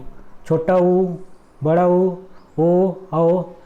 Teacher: जिन स्वरों के उच्चारण में होठ वृत्तमुखी या गोलाकार होते हैं, उन्हें हम क्या बोलते हैं? वृत्तमुखी स्वर कहते हैं।